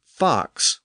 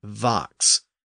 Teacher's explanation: that the f is voiceless and the V is voiced so speakers in the far south tended to voice that F sound thereby making it a v · are very similar sounds the only difference is that the f is voiceless and the V is voiced so speakers in the far south tended to voice that F